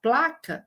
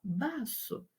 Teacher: haverá redução do encontro consonantal, isso é esperado